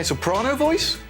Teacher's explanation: Before the booze and a good night's sleep, my vocal cords are tense, and so my voice is high.